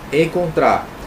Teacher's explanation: o tra, oxítona, né? Porque é a última sílaba